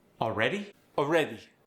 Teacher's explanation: The AL sound becomes an O sound.